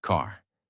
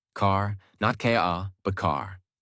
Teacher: It is not silent, it is not weak, it is fully pronounced. Your tongue moves slightly back, your mouth stays relaxed, and the sound comes from inside, not from the lips. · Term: American R sound